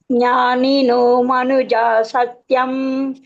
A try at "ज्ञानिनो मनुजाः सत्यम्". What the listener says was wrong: Manujas. You are removing the visarga.